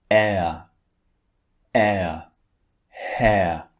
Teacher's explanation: sounds as I said the first one is long ah and the second one is actually two vowels squeezed together that's why we change the shape of our mouth when we say this second vowel